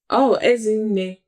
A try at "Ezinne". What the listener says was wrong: Ezinne. It goes down. Yes, it goes lower. Yes, you were taking it higher.